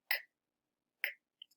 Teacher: I feel it all the way in the back of my throat. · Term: K sound